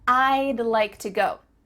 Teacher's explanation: Do you see how we can speak quicker because we're cutting off all of the sounds in the word would, except for that final D